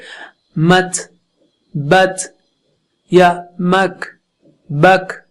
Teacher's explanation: جب کاف یا تا پر سکون ہو تو اس کو بالکل ہلکے تھا کی طرح پڑھنا چاہیے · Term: ہمس